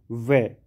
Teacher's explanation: जो व का उच्चारण स्थान है वो है दंतोष्ठ